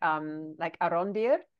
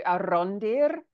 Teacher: Sometimes he'll just tap the R